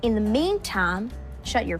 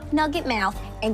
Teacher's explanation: the words mouth and out have that drawl feel by having an extra schwa